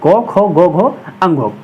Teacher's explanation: जिस ध्वनि का उच्चारण जो है कंठ से होता है, उन वर्णों को कंठे ध्वनि या कंठे वर्ण कहते हैं।